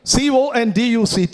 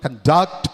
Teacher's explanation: CONDUCT, it could fall on the first syllable, conduct, that's a noun. Falls on the second syllable, conduct, it's a verb.